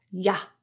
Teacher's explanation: The word you, since it is unstressed, gets reduced, and that's why it sounds like a neutralized vowel.